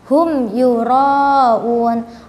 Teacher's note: Ro-nya juga tebal, dan juga di ayat ke-6 ini huruf ro-nya harus dibaca panjang karena di sini terdapat hukum mad wajib mutasil. Jadi ketika membaca, kita membacanya dengan 5 atau 6 harokat.